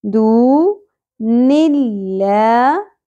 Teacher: لفظ اللہ کا لام باریک ہوگا کیونکہ پہلے زیر آ گئی